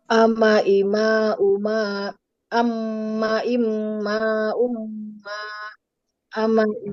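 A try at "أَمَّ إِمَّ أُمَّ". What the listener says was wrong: Mumtaz. Betul sekali ya.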